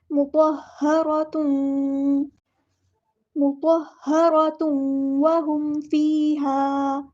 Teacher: تا کے اوپر جو دو پیش ہے اس کو واو کے اندر مکس اپ کر دینا ہے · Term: ادغام مع الغنہ